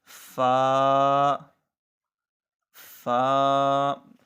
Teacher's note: سامنے والے دانتوں کا کنارہ جب نچلے ہونٹ پر لگے گا تو فا کی آواز پیدا ہوگی